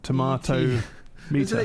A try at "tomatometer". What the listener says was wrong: You're saying tomatometer, but you're pronouncing the A and O. You shouldn't be doing that.